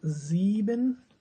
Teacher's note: s sounds as za. No, not sa.